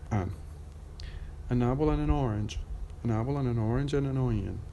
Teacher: No D when I said the conjunction and.